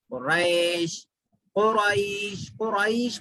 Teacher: اگرچہ حروف لین ہے لیکن تھوڑا کھینچنے کی اجازت ہے رکتے وقت میں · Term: مد لین وقف عارضی